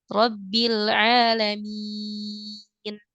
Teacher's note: Mad aslinya ini yang sebelumnya dua harakat menjadi panjang empat harakat rabbil alamin seperti itu ee ini tentu saja banyak sekali contohnya